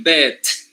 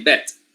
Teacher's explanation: when you have a voiceless stop at the end of a word you don't release it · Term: unreleased stop